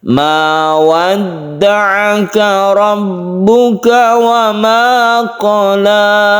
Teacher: Ada ain di sini. Hati-hati makhrajnya ain tersebut di tenggorokan.